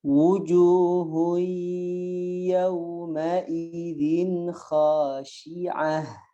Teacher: majukan bibirnya, ingat wawu ya. Terlebih apalagi dia dalam keadaan berharokat dhammah, maka jelas kita harus majukan bibirnya.